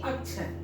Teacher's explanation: इसमें क्या है, दो वर्ण मिला हुआ है, कौन कौन सा, क और श, इसलिए उसके उच्चारण देखिएगा पहले क आता है फिर श आता है, लेकिन सुनने में लगता है कि छ बोल रहा है। जब एक साथ दोनों मिलाकर बोलते हैं तो लगता है कि छ बोला जा रहा है। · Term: संयुक्त व्यंजन